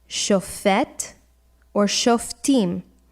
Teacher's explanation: shofet or shoftim, with the accent on the last syllable